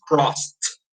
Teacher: edie you're going to pronounce crossed notice that in this case the e d is pronounced as a t as a letter t the sound of the letter t